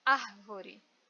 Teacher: Eu tenho a última, da direita para a esquerda, última, que é o RE, penúltima, VO, e a antepenúltima, que é AR. Esse AR é a sílaba mais forte e ainda mais não me deixa dúvida porque ela está acentuada.